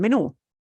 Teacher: The way we pronounce menu punches the U at the end